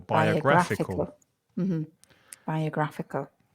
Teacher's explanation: tricky word five syllables biographical stress the third syllable